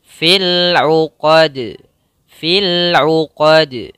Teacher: qalqalahnya ketika dia sukun atau ketika kita waakaf kita matikan jadi jangan dibaca fil uqad tapi kita harus pantulkan sedikit